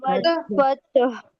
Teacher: हा का आवाज आना बहुत जरूरी है क्योंकि लास्ट वर्ड हा है, ता नहीं है